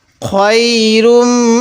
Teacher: এখানে মিমের উপর তাজদিদ দেখতেছি এজন্য আমরা গুন্না করবো